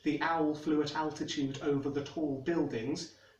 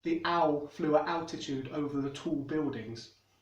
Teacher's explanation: Another one is L vocalization, which is actually something I do on occasion. So when there's an L at the end of a syllable, it'll take on an oo sound instead. For example, instead of the standard English, the owl flew at altitude over the tall buildings, you'll get something like the owl flew at altitude over the tall buildings.